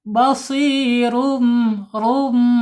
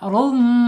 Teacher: Rnya ditebalkan dulu ya. Rum. Jangan basirum ya. Harus ditebalkan dulu.